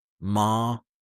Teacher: Flat. Steady. No rise, no fall, just calm. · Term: level tone